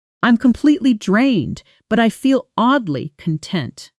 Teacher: Notice the connected sound of but I feel where but I often blends into something closer to buddy feel in fast casual native speech. The t softening almost disappearing between two vowel sounds.